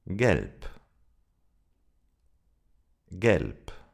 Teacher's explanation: We don't say galp, but gelp. The final B sounds like a P.